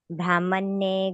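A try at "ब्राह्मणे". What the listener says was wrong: ಇಲ್ಲಿ ಬ್ರಾಹ್ಮಣ್ಯೆ ಇದು ಬ್ರಾಹ್ಮಣ್ಯೆ ಅಂತ ಹೇಳಬೇಡಿ ಮತ್ತೆ ಅಲ್ಲಿ ಇನ್ನೊಂದು ಒತ್ತು ಬಂದಂಗೆ ಆಗುತ್ತೆ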